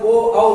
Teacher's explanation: ओ और औ का उच्चारण कंठ और ओष्ठ दोनों से होने के कारण कंठोष्ठ वर्ण कहलाते हैं। यानी कि ओ और औ ये कंठ और होंठ दोनों को टकराकर ओ औ जब आप बोलते हो तो निकलता है, इसलिए उसका उच्चारण स्थान क्या होता है?